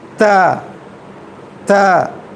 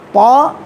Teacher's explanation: قا حروف مستعلیہ میں سے موٹا حرف ہے